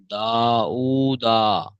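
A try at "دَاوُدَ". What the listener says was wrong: এই দাটা টান হবে না।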